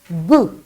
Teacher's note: when you say boo there is a total vibration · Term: voice sound